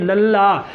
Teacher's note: जीभ ਤਾਲੂਏ ਨਾਲ ਲੱਗ गई, आवाज़ रुकी और रुक के दोनों पासों बाहर निकली। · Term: पार्श्विक व्यंजन